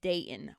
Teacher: Using the glottal stop. Yep. It stops in the throat.